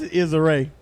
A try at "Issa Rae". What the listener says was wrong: Issa, it's not Issa Rae like it's a ray of sunshine.